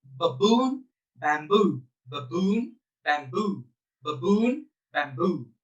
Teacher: So the word stress will be on the second syllable because it is louder.